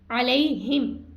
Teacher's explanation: علی اب یہاں پہ لئی کیا ہے یا ساکن سے پہلے حرف پر زبر ہے تو یا لین ہم اس کو نہیں کھینچیں گے